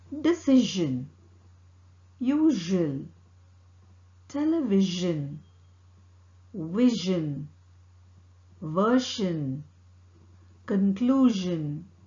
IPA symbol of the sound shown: ʒ